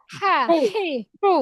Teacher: হলকের হা, মতো, হি, হ্যাঁ, হু। হালকা একটু বাতাস বের হবে, ফ্যাসফেসে একটা আওয়াজ হবে।